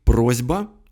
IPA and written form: ˈprozʲbə (просьба)